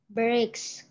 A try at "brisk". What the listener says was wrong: Is it the letter S, the sound of letter S comes first before the sound of K. So it's brisk, brisk. All right, brisk, not bricks. Bricks. The sound of letter K comes first before the S, but this one S comes first before the K, so it's brisk.